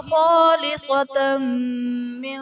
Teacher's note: تنوین کے بعد حروف یرملون میں سے میم آ رہا ہے تو یہاں پر ادغام مع الغنہ کا قاعدہ ہوگا، یعنی تنوین میں ہم غنہ کر کے پڑھیں گے۔